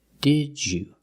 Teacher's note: So we pronounce the first D as a real D. Did you. The second D changes to the j sound, like juice and jump.